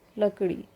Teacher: व्यंजन वर्ण जिनके उच्चारण में जीभ झटके से ऊपर नीचे होती है उत्क्षिप्त व्यंजन कहलाते हैं। एक हमने शब्द लिया लकड़ी, आप बोल के उच्चारण करके देखिए तो आप देखेंगे कि जीभ जो होती है वो क्या झटके से ऊपर जाती है जीभ का जो नुकीला हिस्सा होता है ऊपर जाके और फिर नीचे आ जाता है।